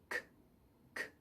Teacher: When we have an unvoiced ending to the word, so say talk, so that final K, there's no voice here